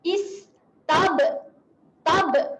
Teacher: Rapatkan bibir, kemudian dia buka. Maksudnya dia rapat sekejap dan dia buka balik. Dia melantunlah kat bibir kita. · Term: qalqalah